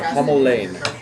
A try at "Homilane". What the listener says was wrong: Pronounced as if it's one word. Homilane.